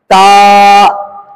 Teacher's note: जबान ऊपर के दांत के जड़ में लगेगी